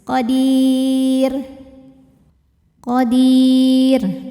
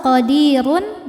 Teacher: Nah, tapi kalau wasol qadirun, runnya ini, ro-nya ini tetap dibaca tafkhim ya, karena barisnya dhammah tanwin ya. Jadi kalau berhenti tarqiq, kalau terus tafkhim